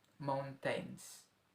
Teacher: Mount, kita stressed, tains-nya kita unstressed. Jadi ini termasuk ke dalam trochaic.